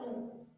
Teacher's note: जब हम बोल रहे हैं उ, तो हमारा जो ओठ है ये गोलाकार में आ जा रहा है